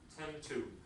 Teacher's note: Tend to. The D is elided here because it's between two consonants. Tend to. Two becomes T.